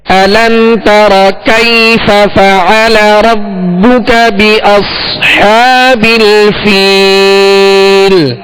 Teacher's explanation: ہمزہ کی سختی ہوگی اور اس کی صبر ادا کرتے ہوئے منہ اور آواز دونوں کھول کر پڑھیں گے